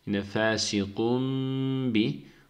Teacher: Burada teminden sonra B harfi gelmiş. Burada iklab var. Bu teminin içindeki nun harfini mim harfine çeviriyoruz.